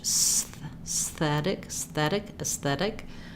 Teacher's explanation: Just working on that transition of tongue behind the teeth and then tongue between the teeth.